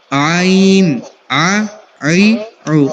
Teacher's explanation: عین جو ہے وہ حلق کے بالکل درمیان والے حصے سے ادا ہونے